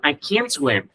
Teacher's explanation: Các bạn không nghe được chữ t nhưng các bạn sẽ nghe được chữ can